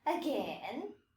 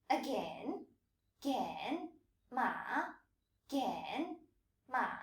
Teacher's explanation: Notice that dipping and rising tone in the second syllable. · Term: third tone